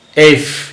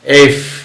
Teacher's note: তারপর হচ্ছে এটাকে আমরা উচ্চারণ করি এফ, উচ্চারণ হয় এফ, উপরের দাঁত নিচের ঠোঁট একসাথে লাগে, এফ, বাতাস যাবে এফ।